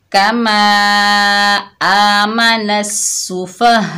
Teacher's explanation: फा, आगे मद्दे मुत्तसिल है, बड़ी मद है, मद्दे मुत्तसिल वाजिब, यानी इसको 5 अलिफ की मिकदार खींच कर पढ़ेंगे